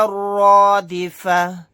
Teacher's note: را کو موٹا یعنی پر پڑھیں گے، تا کو ہا ساکن بنا کر پڑھیں گے آیت کرنے کی صورت میں۔